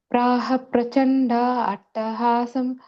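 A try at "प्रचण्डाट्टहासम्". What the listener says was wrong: Okay, I think you're separating the word attahasam. It's one word. Prachanda attahasam.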